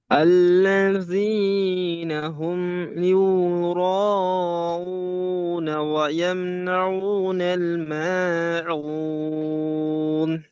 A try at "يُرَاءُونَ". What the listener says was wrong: হুম এখানে গুণা হবে না, আর ইউর নয়, ইউর।